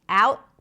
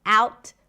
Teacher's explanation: The word out is pronounced with the a as in cat, and then we shift to the sound, ow, and then we end it with a t. Could be a held t, out, or a pop t, out. Both are fine.